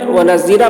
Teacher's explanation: ہم ٹھہریں گے تو تنوین کو نہیں پڑھ کے الف کو پڑھیں گے